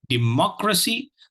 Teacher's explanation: The second syllable carries the accent, carries the is stressed.